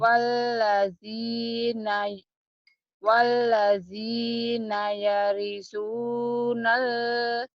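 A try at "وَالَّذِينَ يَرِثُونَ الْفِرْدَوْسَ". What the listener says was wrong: ada wa-nya ya? Kok waladi? Ini ada wawunya ya?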